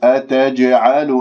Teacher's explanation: قالوا ضم الشفاه في الواو، قالوا أتجعلوا أتجعلوا، انتبهوا لهذه الجيم المقلقلة قلقلة صغرى